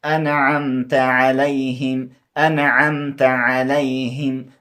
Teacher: نو داسې انعمت نون ظاهرول په کار دی نه دی نون پټول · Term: اظهار